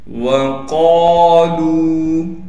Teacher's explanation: وقالوا، قاف کے بعد الف حروف مدہ میں سے ہے، لہٰذا قاف کو ایک الف کی مقدار کھینچیں گے اور لام کے بعد واو مدہ ہونے کی وجہ سے لام کو بھی ایک الف کی مقدار کھینچیں گے